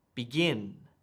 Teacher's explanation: it has emphasis on the second syllable why because it's a verb so there's a cool little fluency